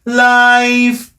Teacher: going from an open vowel la into E, because life is a diphthong. Okay, life.